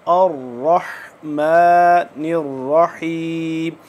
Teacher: र मोटा है और तशदीद है तो इसलिए थोड़ा सा सख्ती भी इस पे करेंगे खींच के पढ़ेंगे